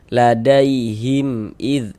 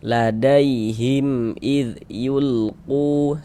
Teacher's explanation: Karena dia izhar syafawi, cara membacanya dibaca jelas dan tidak berdengung. Jadi, tidak digunahkan. · jangan dibaca him dipanjangkan, itu jangan, salah, pendek saja. Ladaihim id yulqu, seperti itu.